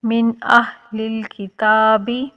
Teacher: صرف تا کے اوپر حرکت مدہ ہے، اسی کو ہی کھینچیں گے بس، باقی حرف کو اس طرح نہیں کھینچیں گے۔